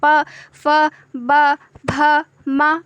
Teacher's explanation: आप बिना ओष्ठ को स्पर्श कराए प नहीं बोल सकते